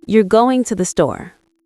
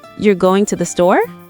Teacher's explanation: If I say it like a statement, my voice goes down at the end.